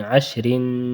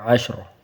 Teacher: را باریک پڑھیں گے، عشرن، وقفاً عشر، وقفاً میں را موٹا پڑھیں گے